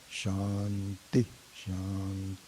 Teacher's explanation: shant starts low and goes up high